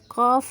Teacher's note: قاف زبان کی جڑ کا آخری حصہ جو ہے اوپر والے تالو کے نرم حصے سے لگنے سے قاف ادا ہوتا ہے